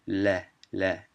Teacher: usually the L in Arabic is called lam, and it produces a la, la, a thin L sound